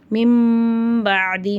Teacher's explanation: இக்லாபுடைய சட்டம் வருதுனால அந்த நூனுடைய சப்தத்தை நம்ம மீமா மாற்றி குன்னா செஞ்சு ஓதணும்